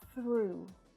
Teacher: Watch out for the unvoiced TH sound here, it's a little tricky when it's next to the R. Make sure that your tongue is coming through your teeth when you pronounce that sound.